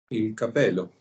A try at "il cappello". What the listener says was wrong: Il cappello. Ok, perfetto, il cappello con doppia P, ricordate, non è capello, è cappello. Importante, per quello è un buon esempio perché dovete sempre ricordare le doppie consonanti, perché se io dico cappello, una bella doppia P e una bella doppia L, cappello, significa sombrero.